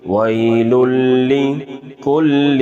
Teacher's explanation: یہ یالین ہے، نرمی کے ساتھ پڑھیں گے بغیر کھینچے۔ لام مشدد دو دفعہ، لام مشدد دو دفعہ، پیش پہ ہونٹ گول۔